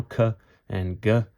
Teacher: If you pronounce it out loud right now, "k" and "g", you'll notice it's kind of on the roof of your mouth towards the back half